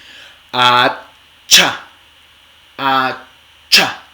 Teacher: mano aquí si quieren otra vez y hacen a cha entonces fíjense cómo el aire primero se detiene y luego sale